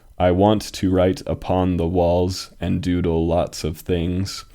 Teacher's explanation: this line did have nine syllables but uh the ninth syllable was unstressed